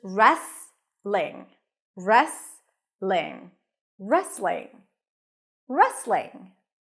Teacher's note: just an r and then an a sound re re rest you also don't hear the T so it's just restling